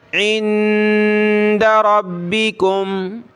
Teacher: نون ساکن ناک میں آواز پیدا کریں گے